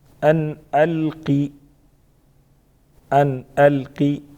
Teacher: अन अलकी नून साकिन का इजहार होगा क्योंकि आगे हरूफ हल्क़ में से हमसा है। अलकी क़ाफ पर पढ़ेंगे।